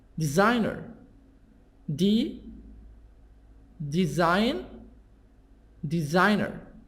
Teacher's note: stress is in the middle